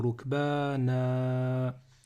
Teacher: Le tanwin fatha, lorsque je m'arrête dessus, eh bien, je vais prononcer un alif à la fin.